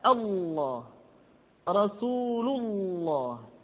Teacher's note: Lafaz Allah dimanapun kapanpun, maka lam yang terdapat pada lafzul jalalah tersebut mesti ditebalkan.